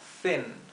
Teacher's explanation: Es una I corta y más cerrada, más apagada.